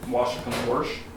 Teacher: What's called the intrusive R before the SH